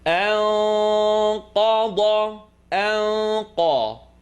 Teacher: Nun sukun followed by qaf, not in the throat, behind the uvula.